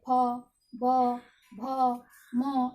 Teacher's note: प वर्ग का उच्चारण ओष्ठ से होता है